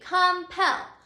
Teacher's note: you can see that the accented or the strongest syllable is our final syllable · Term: accented syllable